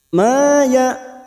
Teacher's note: Ma fathah dikuti Alif dua harakat kita panjangkan